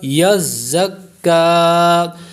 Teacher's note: زا کو کاف کے ساتھ ملائیں، یزکا، کاف باریک ہوگا